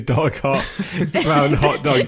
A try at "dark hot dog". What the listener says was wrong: Dark hot dog. You're pausing in the wrong places. Hot dog.